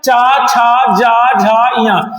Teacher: ये तालव्य व्यंजन के अंतर्गत आते हैं जिसे तालु बोलते हैं जो तालु से बोले जाते हैं